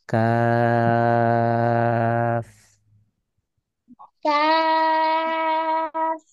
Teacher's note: জিহ্বার গোড়া তার বরাবর উপরে তালুর সঙ্গে লাগিয়ে কফ উচ্চারিত হয়। · এই কাফ এই হরফটাতে 4 আলিফ টান দিয়ে পড়তে হবে। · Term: চার আলিফ